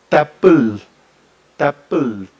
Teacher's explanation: Si se ve que el ápice de mi lengua eh asoma, digamos, entre los dientes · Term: interdental